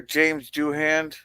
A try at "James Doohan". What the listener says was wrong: It's Doohan, not Doohand.